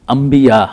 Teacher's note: چونکہ اس کے بعد حرف با آ گیا ہے، اس لیے اس با کے آنے کی وجہ سے اس نون کی آواز میم میں کنورٹ ہو جائے گی